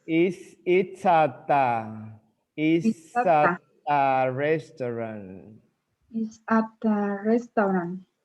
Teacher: Juntan it's at, terminante it's at a restaurant. So juntan la S con la A, la T con la A